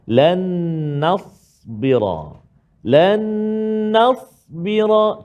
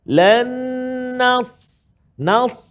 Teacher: Terangkat lidah kita menghampiri langit, dia berbeza dengan kita sebut huruf sin. Kalau huruf sin dia tak terangkat. Nas. Kan lan nas jadi sin. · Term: huruf sad